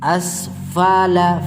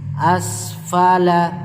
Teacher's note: asfala asfala huruf Fadila di caranya cara penyebutannya berupa gigi atas ujung gigi atas bertemu dengan bibir bawah bagian dalam